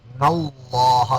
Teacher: لفظ اللہ سے پہلے زبر آ گیا، اللہ کو پورا موٹا کریں گے